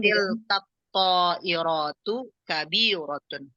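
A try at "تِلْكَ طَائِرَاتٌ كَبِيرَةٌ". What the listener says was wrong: Jadi to'iratunya panjang ya.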